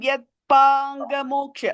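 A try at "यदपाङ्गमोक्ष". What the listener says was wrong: No, you're saying Yad. It's Yadapangamoksha.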